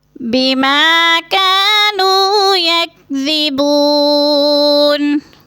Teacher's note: بما کو تھوڑا سا لمبا کریں گے، الف مدہ ہے، اور کانو کو بھی تھوڑا سا ہم نے کھینچ کے پڑھنا ہے.